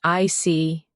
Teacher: When you show understanding with I see, your tone drops slightly to show calmness. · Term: Intonation